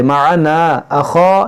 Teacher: دیکھیے یہ مد منفصل ہے. معنا اخا, یہ خا حرف مستعلیہ موٹا کریں گے, دونوں میں الف مدہ ہے.